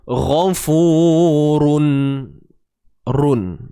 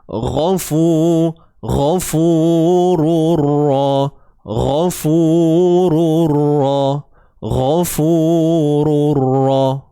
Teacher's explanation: Tapi bila kita kata idgham, memasukkan, maka bunyi run tu dah tak ada dah. Dia dah masuk dalam ra.